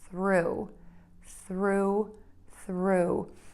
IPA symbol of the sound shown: θru